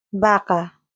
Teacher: In Spanish, the letter V is usually pronounced very similarly or even the same as B, producing a soft sound made by pressing the lips together. Unlike English, there is no strong V sound made with the teeth and lower lip.